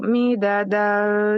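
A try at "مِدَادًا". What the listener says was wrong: Midadal panjang. Dalnya 2 harkat.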